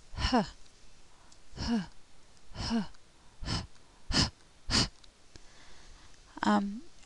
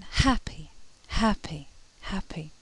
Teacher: It's what we call a breathy voiced consonant, so there is some vibration. If you press your fingers to your throat, you'll feel some vibration of the vocal cords, and little air is produced.